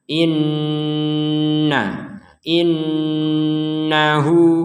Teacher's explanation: Perhatikan di sini, ada seorang 'biarawati' dengan tashdid. Kita membacanya dengan bunyi sengau (ghunnah).